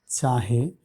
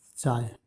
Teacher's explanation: এক্ষেত্রে হ লোপ পেয়েছে। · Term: হকার লোপ